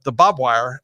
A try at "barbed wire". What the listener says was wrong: It's barbed wire, not bob wire. It's not Bob's wire. Barbed wire.